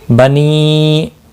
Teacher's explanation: یا مدہ ہے، ایک الف کے برابر کھینچ کر پڑھیں گے